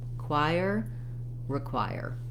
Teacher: the choir syllable is stressed